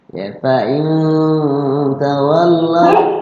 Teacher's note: nun mati ketemu tak, ikhfa, ya ikhfa, ya ikhfa-nya adalah aqrab